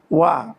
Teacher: ওয়াও দুই ঠোঁটের মাঝখানের ফাঁক থেকে পড়তে হয়।